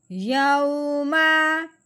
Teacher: لین کو نرمی سے پڑھتے ہیں، کھینچ کے بالکل نہیں پڑھتے